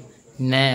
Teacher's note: நாவின் நுனி மேல்வாய் அன்னத்தின் முன்பகுதியை தொடுவதால் பிறப்பது